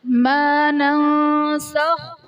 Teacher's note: ما ننسخ میں نون ساکن کے بعد حروف اخفا میں سے سین آ رہا ہے تو یہاں پر اخفا کا قاعدہ ہوگا، یعنی نون ساکن میں ہم غنہ کر کے پڑھیں گے